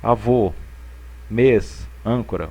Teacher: ele tem um som tônico mas ele é mais fechado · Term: acento circunflexo